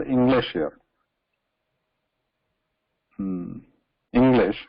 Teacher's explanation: We are changing it to this sound, nga sound, English, because after this na sound or N sound, after this N, there is immediately a ga sound